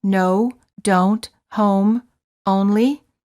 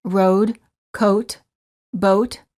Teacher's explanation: For the O, the lips are very rounded and tense, and the tongue is a bit tense, and it moves from the mid-high to the high position.